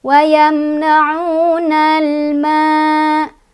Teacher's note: Wayamna'unal ma ada alif lam komariyah karena ada alif lam menghadapi huruf komariyah yaitu mim. Cara bacanya alif lamnya dibaca jelas, jangan mantul, jangan ditahan ya.